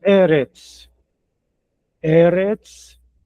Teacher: A segunda palavra, Eretz, observe, outra vez aqui ela tem segol, os 3 pontinhos 2 vezes. Nesse caso, eu leio o E mais forte no começo.